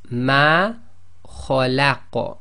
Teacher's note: the qaf becomes sakin, that's one of the qalqala letters, so it becomes an echo